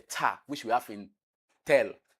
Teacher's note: that is voiceless alveolar plosive